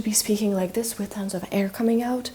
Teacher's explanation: If I were to be speaking like this with tons of air coming out then that would be breathy voice.